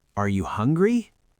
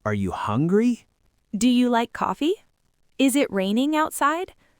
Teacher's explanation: In all of those examples, the very last syllable lifts up. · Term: rising intonation